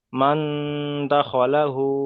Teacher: নুন সাকিনের পরে হুরুফে ইরফার 15টি অক্ষরের মধ্যে এখানে দাল এসেছে, তাই নুন সাকিনের আওয়াজকে নাকে তুলে একালি পরিমাণ গুণনা করে পড়তে হবে